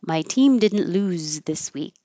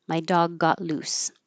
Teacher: Lose sounds like a Z. Loose sounds like an S.